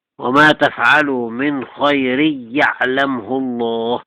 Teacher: حذف الغنة من خير